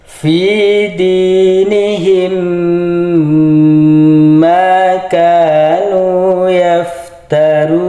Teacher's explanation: mim matinya langsung dimasukkan ke mim. Didengung atau ditahan. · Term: idag mimi